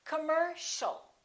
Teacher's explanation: the second syllable is stressed. The O and the IA are both reduced. So it's not com or calm, it's come, come.